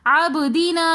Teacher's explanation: عبدینا میں با حروف قلقلہ میں سے آ رہا ہے تو اس لیے ہم با کے اوپر قلقلہ کریں گے. عبدینا نا کے اندر الف ساکن اس سے پہلے زبر آ رہا ہے تو اس لیے ہم الف مدہ کو کھینچ کر پڑھ رہے ہیں.